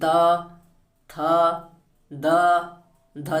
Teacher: और छोटा वाला स फ्रेंड ये त वर्ग के अंतर, देखिए इनका उच्चारण करेंगे, आपकी जो जीभ है ये दांत से देखिए जाके चिपक रही है। त थ द ध, देखिए आपकी जीभ क्या दांत से चिपक रही है।